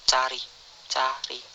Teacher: belakang rendah Netral terbuka